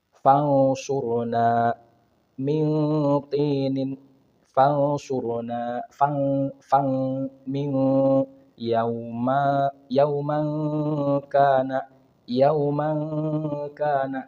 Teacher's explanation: Disamarkan. Artinya menutupi suara nun sukunnya seolah-olah seperti suara eng. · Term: ikhfa